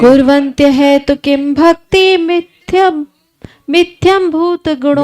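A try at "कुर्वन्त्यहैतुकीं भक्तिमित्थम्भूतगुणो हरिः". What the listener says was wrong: नहीं है गुणो हरि, मिथ्या नहीं है गुणो हरि। कुर्वन्त अहेतु किम भक्तिम, फिर इत्थम संधि तोड़ लीजिएगा, इत्थम भूत गुणो हरि।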